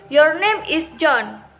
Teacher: For example, your name is John, beginning with a medium pitch and ending with a lower one, namely the falling intonation